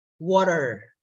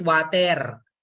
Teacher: the local R is an alveolar flap, not an American English retroflex.